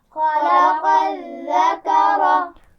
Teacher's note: خا موٹا ہے، قاف موٹا ہے، اور ذال کے مخرج کو نرمی سے پڑھیں گے، سیٹی نہیں ہونی چاہیے